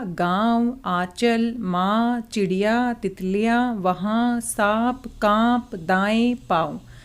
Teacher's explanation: बोलते समय हवा मुंह से ज़्यादा और थोड़ी सी हवा नाक से भी निकल रही है। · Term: अनुनासिक